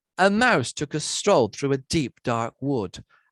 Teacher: it consists of a stressed syllable followed by two unstressed ones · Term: dactylic tetrameter